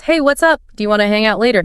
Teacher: that R really stands out you can hear it at the end of words even in the middle of words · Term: strong R sound